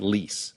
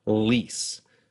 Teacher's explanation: In English, when we say a word like lease, the back and front of your tongue will both come up towards the roof of your mouth. Lease. But in Spanish, only the tip of your tongue comes up, and it reaches just behind your front upper teeth.